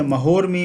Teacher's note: महा और उर्मी, इसमें आ और उ मिलकर के एक ओ का निर्माण किए। तो इस प्रकार से यह संधि भी गुण संधि कही जाती है।